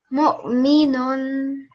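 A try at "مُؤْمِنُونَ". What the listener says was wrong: Just the soft jerk. Mu. The meme sound. The dhamma is a sharp sound, so it can't be a mo. It has to be sharp. Mu. Mu'minun.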